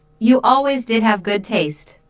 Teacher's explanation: notice the stress on did which uses to emphasize the fact that Julia does have